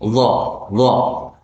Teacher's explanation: tempatnya ujung lidah kita itu di sebelum gigi